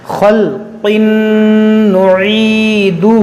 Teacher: یہ خا اور قاف جو حروف مستعلیہ ہے اس کو موٹا کریں گے